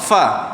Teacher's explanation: Gigi atas dia berkena, makhraj dia gigi atas kena pada bibir bawah.